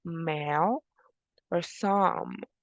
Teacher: Remember, bilabial sounds are or happen when both lips gets in contact. So voiced bilabial nasal sound.